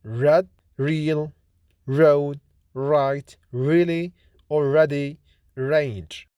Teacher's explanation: R is voiced post-alveolar approximant consonant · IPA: /r/